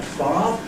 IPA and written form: fɑː (father)